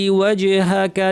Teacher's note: জিমের উপর সুকুন আছে, কলকলা